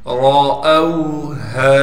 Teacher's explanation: ہا کو صاف کر کے گلے سے نکالیں گے، گلے کا وہ حصہ جو سینے کی جانب ہے، اور ہا کے بعد الف ہونے کی وجہ سے ہا کو ایک الف کی مقدار کھینچیں گے۔ · را کو موٹا کر کے پڑھیں گے اس لیے کہ را پر زبر ہے۔ حمزہ کو واو سے ملا دیں گے اس لیے کہ واو ساکن ہے۔